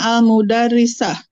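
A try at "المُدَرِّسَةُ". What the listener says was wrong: Al-mudar, jangan disukunkan. Al-mudarrisa.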